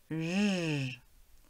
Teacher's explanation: Tu dois sentir les cordes vocales qui vibrent. C'est un son sonore.